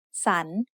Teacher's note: the first syllable makes the sound sun with a rising tone